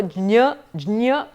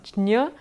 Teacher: it is a combination of ja and ña and therefore jña. You go over the ja really fast